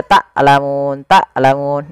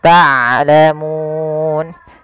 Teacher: Harusnya dia ain dari tengah tenggorokan kita, dan ain punya sifat bainiyah.